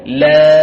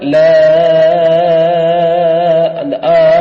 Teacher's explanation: லாம் இதனை நாங்கள் ஆ என்கிற துணியில் ஆறு ஹரக்கத்தை மீட்டி ஓதுவோம் லா அப்ப எப்படி ஓத மாட்டோம் லா அந்த ஆ இப்படியான நடுக்கு வரக்கூடாது